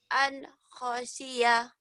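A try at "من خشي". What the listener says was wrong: Kok an ini man. Man khasyiya.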